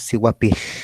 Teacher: Nuestra punta de la lengua se coloca sobre el paladar y el aire sale por los lados, decimos siguapil, ¿sí?